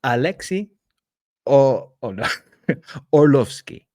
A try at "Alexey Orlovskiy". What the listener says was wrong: close. It's very close. Originally, the R is pronounced, so it's Alexey Orlovskiy, you've been very close.